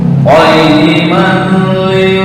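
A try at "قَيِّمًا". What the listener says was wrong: Nah, nggak boleh ditekan. Ini nggak boleh ditekan lama-lama. Qayyiman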